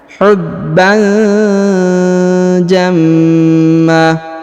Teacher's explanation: tanwin bertemu ja maka didengungkan dan disamarkan